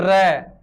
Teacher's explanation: यानी जैसे अपन बोलते हैं र, तो अपने ऐसा लग रहा है क्या हो रहा है, कंपन हो रहा है, वाइब्रेट हो रहा है, जीभ के अंदर या पूरे मुख के अंदर क्या हो रहा है, कंपन हो रहा है। इसलिए नाम क्या रख दिया इसका, प्रकंपित।